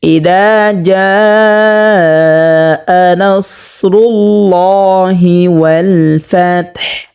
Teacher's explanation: হাটাকে স্পষ্টভাবে হলকের মধ্যখান হতে 2 নাম্বার মাখরাজ হতে উচ্চারণ করতে হবে।